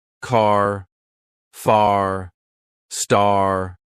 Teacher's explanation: They stretch the r to make it sound stronger. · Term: r sounds